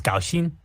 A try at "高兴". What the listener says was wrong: The pronunciation is gaoxing. Yeah, tones are wrong, but the yeah. Yes. Yes.